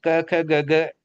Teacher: ये कंठस्थ, कंठ से बोले जाने वाले हैं।